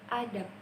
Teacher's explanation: Dalam tatanan grafem, huruf B bisa berada di akhir kata, dan pengucapannya dilafalkan dengan ep.